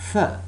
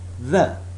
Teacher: Th. It's a voiceless sound. The. It's a voiced sound.